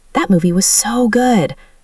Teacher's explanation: Maximum emphasis with the stretched vowel.